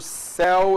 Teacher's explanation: O ditongo aberto, céu é o E aberto, véu é o E aberto